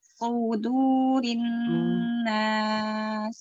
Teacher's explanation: Tebal sod, tipis dal.